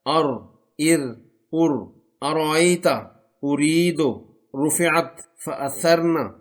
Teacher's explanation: را اس وقت ادا ہوتا ہے جب زبان کا سرا اور زبان کے اوپر کا کچھ حصہ سامنے اوپر کے 4 دانتوں کے مسوڑوں سے لگتا ہے۔